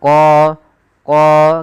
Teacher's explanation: Kemudian pelafal qo di sini ada mad thabi'i yaitu qo tebalkan huruf qnya qo qo karena dia huruf isti'la yaitu pangkal lidah kita terangkat